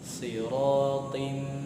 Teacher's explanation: ketemu dengan huruf mim sehingga dia menjadi idgham bi gunnah, sehingga wajib ditahan 2 sampai 3 harokat